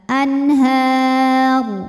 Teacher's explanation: huruf ra ketika berhenti dibaca secara tafkhim sebab rnya disukunkan huruf sebelumnya juga fathah barisnya di atas maka rnya tebal